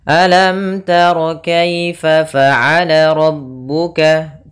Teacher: Nah, jangan sampai kita menahan mimnya di sini karena di sini ada hukum tajwid berupa izhar syafawi yang mana mimnya harus dibaca dengan jelas, tidak boleh ditahan.